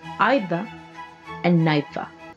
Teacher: However, nowadays, the British has an alternate pronunciation as part of the process of vowel shift, which is now with an initial diphthong, I, so that the words are pronounced either and neither.